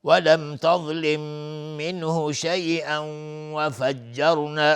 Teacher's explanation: تنوین بعدش واو میشه ادغام با غنه. وفجرنا را ساکن قبلش فتحه اومده حکمش استعلاء است.